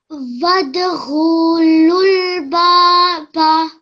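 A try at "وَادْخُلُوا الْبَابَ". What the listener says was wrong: The kha you made long. The kha here you made long. The kha only has a dhamma. So how long should it be? No. 1 second.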